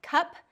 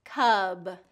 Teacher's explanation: p is the voiceless and B is the voiced